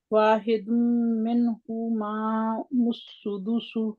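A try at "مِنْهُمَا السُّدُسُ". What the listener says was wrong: नहीं, आप माँ और मुस्सुदुसु 2 दफा कह रहे हैं, मीम को, मीम सिर्फ एक है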